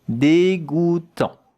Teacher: Dégoût, here we have the sound goût, J-O-U, goût, tant, T-A-N-T. But the T at the end, you don't hear it.